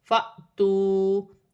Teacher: الف پر جزم کی حرکت ہے، الف جھٹکے کے ساتھ پڑھا جائے گا